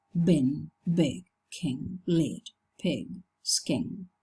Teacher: when the kit is followed by a voiced consonant, it keeps its natural length.